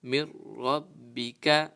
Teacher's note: را آیا ہوا ہے نون ساکن کے بعد، تو اس میں ہم گنہ نہیں کریں گے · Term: بغیر گنہ